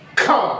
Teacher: जिस वर्णों का उच्चारण करते समय हमारे मुंह से अधिक वायु निकलती है, उन ध्वनियों को हम महाप्राण ध्वनियां कहते हैं